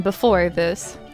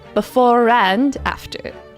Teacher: apple instead of a apple it's kind of the same thing there's no r at the end unless unless there's a vowel sound at the beginning of the next word